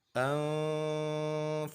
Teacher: nun bertemu dengan fa, ikhfa kita dengungkan.